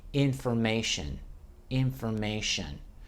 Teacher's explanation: There the T is pronounced as the SH.